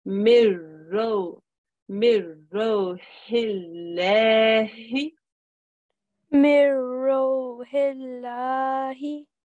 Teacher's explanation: Noon sakin, straight after is a ra mushaddad. So we make no nasal sound. We read it as if the noon isn't there.